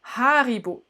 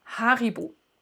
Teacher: Et puis l'accentuation plutôt sur la première syllabe, c'est comme ça que c'est assez typique en allemand.